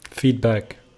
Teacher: Yeah, so you're doing feet, closing it, and then back, and you're not articulating the d.